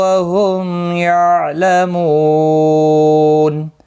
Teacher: وقف کی صورت میں نون ساکن پڑھا جائے گا، وقف بالاسکان ہوگا، مد العارض وقفی ہوگا، 3 سے 5 الف کی مقدار کے برابر کھینچ کر وقف کریں گے